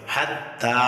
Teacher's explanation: তা এর উপরে কারা জবর আসার কারণে এক আলিফ টান হবে